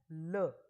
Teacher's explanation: ल में जो प्राणवायु है वो जीभ के दोनों साइड से बाहर निकल जाती है। और ल का उच्चारण करते समय हमारी जीभ का जो आगे का भाग है वो मसूड़े को स्पर्श करता है, जिससे हमारी जो हवा है उसका जो रास्ता है वो रास्ता बाधित हो जाता है, रुक जाता है, और प्राणवायु का मार्ग रुक जाता है। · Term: पार्श्विक व्यंजन